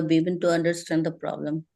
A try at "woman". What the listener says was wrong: You are making a mistake of pronunciation of woman and women. You need to say singular, not the plural. Singular is singular is woman.